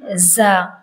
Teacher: इसे अक्सर लोग पढ़ते हैं ज़ो, लेकिन ये ज़ो नहीं है, इसे पढ़ना है ज़ा, ये पूर नहीं पढ़ा जाएगा, इसे पढ़ना है ज़ा, रॉ के बाद आता है ज़ा, ज़ा।